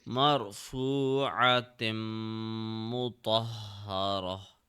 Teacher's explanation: The round ta it will turn into ha when we stop.